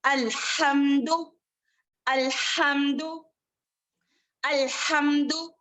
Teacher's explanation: ہا جو ہے وسطل حلق سے ادا ہونے والا ہے